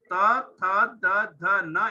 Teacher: अगर दांत तो त ये जो लू त थ द ध न एंड ल उच्चारण करते समय जीभ हमारा दांत को टच करता है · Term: दंत्य